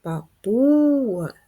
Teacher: г приголосний твердий позначаємо рисочкою останній звук а голосний позначаємо кружечком визначимо наголос папуга наголос стоїть на другому складі